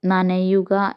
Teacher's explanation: ന എന്ന് ഉച്ചരിക്കുമ്പോൾ നമ്മുടെ മുകൾ വരിയിലെ പല്ലിന്റെ പിന്നിലആയിട്ടാണ് നമ്മുടെ നാവ് ചെന്ന് പെടുന്നത് നാവ് ടച്ച് ചെയ്യുന്നത് അപ്പോ അങ്ങനെ വരുന്ന ട എന്ന് പറയുമ്പോഴും ഈ രീതിയിൽ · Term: വർസ്യം